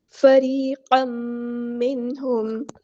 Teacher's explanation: فریقا منہم، یہاں پر ادغام مع الغنہ ہو رہا ہے، فریقا منہم، تنوین کی آواز کو ہم نے میم میں مکس اپ کر دینا ہے